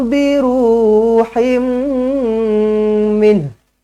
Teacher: Tanwin tak selari bertemu dengan mim sabdu, idgham ma'al ghunnah, jumpa dengan mim sabdu, terus rapatkan bibir, dengungkan dengan 2 harakat.